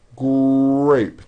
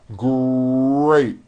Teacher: notice in the word grape the RF sound is stronger and you even hear it more than the G sound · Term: R blends